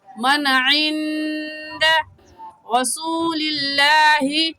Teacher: من میں نون ساکن کے بعد حروف حلقے میں سے عین آ گیا ہے، اس لیے اس نون ساکن پر غنہ نہیں کریں گے